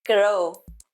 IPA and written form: ɡroʊ (Grow)